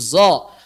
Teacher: Maksudnya tadi tafkhimnya sod kita pindahkan ke zai, jaharnya zai kita pindahkan ke sod sehingga suaranya menjadi zo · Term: ishmam